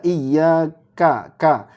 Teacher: huruf Kaf ini memang dia punya ee sifat Hames ya Iya Ka tapi ketika hidup jangan berlebihan hamesnya ini diingatkan